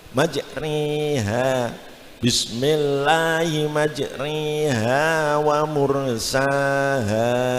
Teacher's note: Nah, itu namanya belum imalah ya. Nah, supaya imalah harus dicondongan lagi menjadi sore ya. Sore itu namanya imalah ya.